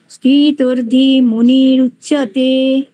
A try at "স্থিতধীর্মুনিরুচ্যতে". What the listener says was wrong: হ্যাঁ, স্থিতর্ধি হয়ে যাচ্ছে, স্থিতধি। রেপটা ওইখানে আছে, ময়ের উপরে আছে আর কি। স্থিতধি বিসর্গ হবে, সেই বিসর্গটা ময়ের উপরে উঠে গেছে আর কি, সন্ধি হওয়ার ফলে। না, স্থিতর্ধি নয়, স্থিতধীর মুনিরুচ্যতে। স্থিতধীর মুনিরুচ্যতে।